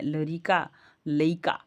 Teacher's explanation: शब्दों के मध्य आने वाले र का लोप हो जाता है · र का लोप हो जाता है, लइका हो जाता है भोजपुरी में। ल ड़ का र में परिवर्तन हो जाता है, थोड़ा, थोड़ा।